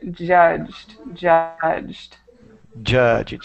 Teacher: a lot of times it's easy to make this Ed into a separate syllable but make sure that you put it all together